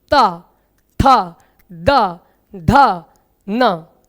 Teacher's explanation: जैसे आप मान के चलिए, अगर मैं कहूं ता, था, दा, धा तथा ना, इन अक्षरों को उच्चारित करिए, तो आप उच्चारित करेंगे तो आप पाएंगे कि आपकी जीभ जो है वो दांतों पर स्पर्श कर रही है।